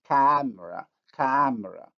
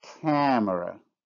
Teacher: If I pronounce the word without nasalization, it would be camera, camera. With nasalization, camera.